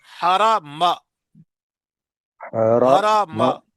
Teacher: میم زبر ما، میم زبر ماں نہیں ہے